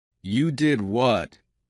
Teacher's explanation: Rising intonation to show surprise.